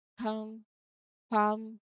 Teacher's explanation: the L is silent and you move directly from the A sound to the M sound